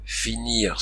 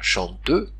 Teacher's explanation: le r final disparaît à son tour au 14e siècle finir se dira fini chanteur se dira Chanteux dans la chanson